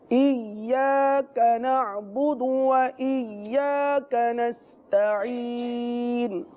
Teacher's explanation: ایاک نعبد ہرگز نہ پڑھیے کہ یہ لہن جلی کی غلطی ہے، بہت بڑی غلطی ہے، لہٰذا تشدید کے ساتھ پڑھیں گے. ایاک یعنی یا کو تھوڑا رک کر پڑھیں گے